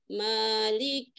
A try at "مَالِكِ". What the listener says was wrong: حققي الكسر مالك